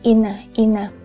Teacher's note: Nhưng mà lúc đó thì cái vị trí của cái lưỡi á, nó sẽ không nằm ngay hẳn ngay cái nướu mà xuống, mà nó sẽ xuống thấp gần cái răng hơn